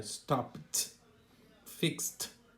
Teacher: No caso aí é o T de tatu, né? Então, terminou em P, por exemplo, que é sem vibração, stop, sem vibração. Aí aparece o T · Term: sons surdos